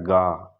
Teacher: और सघोष अल्प प्राण में आता है ग